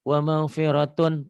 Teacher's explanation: Wa maghfiratun tun idhar nggak ditahan.